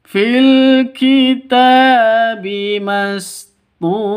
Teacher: Mastura tu panjang 2 ketukan karena ada waw mati diawali dengan dhammah. Jadi kalau dibaca panjang 2 ketukan berarti pasangannya waw mati itu dhammah. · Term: mad asli